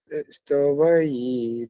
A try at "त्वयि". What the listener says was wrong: त्वयि नहीं, ता पूरा नहीं है ना, त्वयि, त्वयि